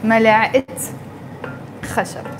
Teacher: because I mentioned wood, the word wood after it, I'm saying a spoon of wood. That's why I pronounce the T مربوطة and I say ملعقة خشب.